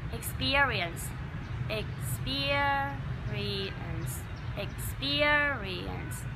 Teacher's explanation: mình sẽ làm theo cái âm tiết thứ hai to cao và dài hơn đồng thời là mình phải dìm những cái âm tiết còn lại xuống